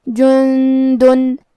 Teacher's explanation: کلمت جندن میں یہاں نون ساکن ہے، پھر حرف الدال ہے، دال حروف الاخفاء میں سے ہے اور اخفاء کا معنی ہے چھپا دینا، تو ہم نون ساکن کو چھپاتے ہوئے اور غنہ کے ساتھ یہ حکم کو ادا کریں گے